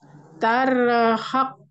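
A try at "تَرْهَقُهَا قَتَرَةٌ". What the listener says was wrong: Awas jangan pakai tasdid kofnya.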